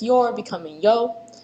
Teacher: there's a dropped R sound in words like you're becoming yo